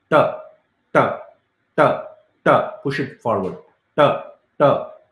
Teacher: t or say e like how an indian would pronounce t so you bend that nicely the tongue back ta that's how you need to pronounce